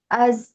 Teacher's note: kita tahan napas karena dia jahr. Yang keluar suaranya aja. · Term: zai, jahar